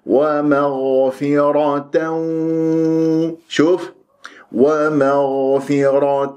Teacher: الغين من حروف الاستعلاء ساكنه مفخمه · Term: غين مفخمه